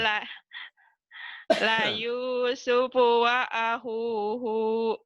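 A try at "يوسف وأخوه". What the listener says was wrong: Pendek hu-nya.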